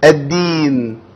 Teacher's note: الدال طالعه زي العسل، طالعه مظبوطه قوي، ما فيهاش هوا